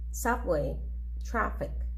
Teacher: the syllable which is stressed is the first one